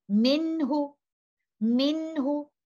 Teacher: letter noon sakina is in an izhar condition and I will give incomplete ghunnah here